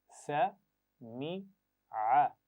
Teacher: पहले सीन की आवाज पढ़ेंगे हम जबर के साथ और सीटी के साथ, फिर मीम की आवाज जेर के साथ और आइन जबर के साथ।